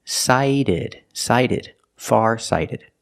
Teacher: the t is pronounced like a fast D because phonetically it's between vowels